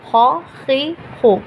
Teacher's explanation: زیر کی آواز آنے کے باوجود یہ لفظ باریک نہیں ہوئے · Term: حرف استعلا